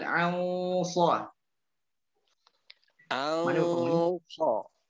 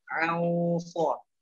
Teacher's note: Nun ya tebal ketika bertemu itbaq.